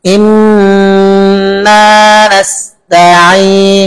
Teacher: আমি ইন বলে একালিপ দীর্ঘ করেছি। ইন বলে জিহ্বাকে উপরে দাঁতের গোড়ায় লাগিয়ে দিয়ে সব আওয়াজটাকে নাকে পাঠিয়েছি। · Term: গুন্না